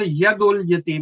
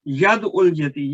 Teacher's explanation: دال ساکن کو ہم یا متحرک کے ساتھ ملا دیتے ہیں شروع میں ہی